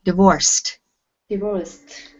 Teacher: It sounds like a T on the end when we have an ED after a C.